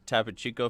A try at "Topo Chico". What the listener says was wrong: Topo Chico? It's got 2 O's. Where are you getting the I from? You're just trying to make it. You're trying to throw some flair on it.